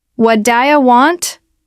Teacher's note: Listen to how the t at the end of want is often dropped in casual speech.